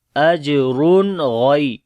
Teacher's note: جیم کے اوپر کلکلا کریں گے جو کہ کمزور ہوگا، را کو موٹا پڑھیں گے، دو پیش ہے اس کے اوپر، اور یعنی کہ تنوین کے بعد اب یہاں پر آگے غین آ گیا تو یہاں پر اظہار ہوگا نون کا، تو پڑھیں گے اجرن غی، اجرن اج، ٹھیک ہے.